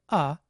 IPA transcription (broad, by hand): ə